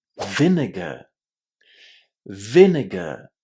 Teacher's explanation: as you can hear, I'm not pronouncing the letter R at the end of vinegar. This is because I speak British English, and in British English, in similar situations, we don't pronounce the letter R.